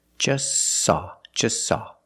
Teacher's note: is between consonants so don't pronounce it it's silent just saw you link the S with the S link them together